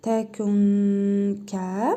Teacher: İhva qaydasına görə nun hərfini bir əlif miqdarı burnumuzda uzadırıq və burnumuzda tələffüz edirik